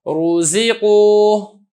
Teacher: حرکت ضمہ کی ہے تو پر کر کے پڑھوں گا